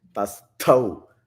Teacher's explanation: Ta is the alpa prana, ta. Then thau, which is the mahaprana.